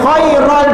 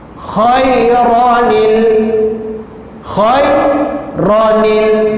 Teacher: Dia kena tambah nun baris bawah. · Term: iltiqa'u sakinain